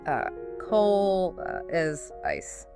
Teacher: Their vowels just collapse into that neutral lazy uh sound. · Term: the schwa